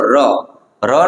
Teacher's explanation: ર ને આપણે બોલીએ ને ર એટલે એક ટકોરો જ થાય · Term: એક ટકોરા વાળું વ્યંજન